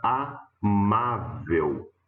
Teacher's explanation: perceba que a sílaba tônica é a penúltima portanto paroxítona e lá na última ela termine em L né paroxítona terminada